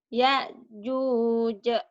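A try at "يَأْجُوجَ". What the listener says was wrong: Bukan ke ain ya, ke hamzah. Ya'juj.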